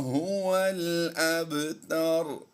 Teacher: با ساکن ہے، قلقلہ صغریٰ ہوگا